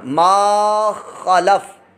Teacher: لام پر حرکت ہے اور فا ساکن ہے، اس کو دراز نہیں کرنا